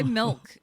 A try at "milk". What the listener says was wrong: Why so much emphasis on the K when you say milk? Milk.